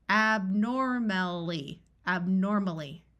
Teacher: We remember that OR says or, and AL, when part of a suffix, sounds more like ul rather than a clear al sound.